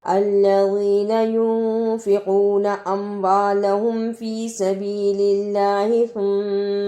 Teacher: ثم اسے سما نہیں پڑھنا، سا کی جگہ پہ سین کی آواز نہیں آنی چاہیے